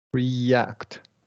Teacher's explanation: we're going to close the long E, but we're just not going to emphasize that Y sound